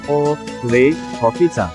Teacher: आपल्या तोंडाचे स्वरूप थोडं विस्तृत होते आणि ओठ थोडेसे पुढे येतात